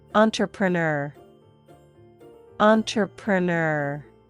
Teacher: R at the end is strong and rounded.